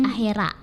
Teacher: Kata akhirat itu kan memiliki fonem i di tengah, itu akan berubah menjadi e dalam bahasa Bugis menjadi akhera.